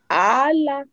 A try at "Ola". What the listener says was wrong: Allah. Pourquoi tu changes le ton? Allah, toujours, c'est pas Allah.